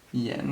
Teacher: Yen with a second tone